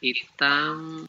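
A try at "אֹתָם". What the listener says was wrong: Otam. Ooh, look at the difference there, where we've got Itam and Otam. They're both et, But one is for the direct object. And one is with. This is with them, and this is just them.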